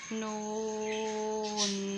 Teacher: نون کے اوپر بھی مد ہے اور نون کو بھی 5 سیکنڈ جتنا لمبا کیا گیا ہے